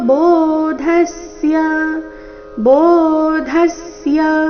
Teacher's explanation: ಧ ಮಹಾಪ್ರಾಣ ರಸ್ವ ಅದರ ಮೇಲೆ ಆಘಾತ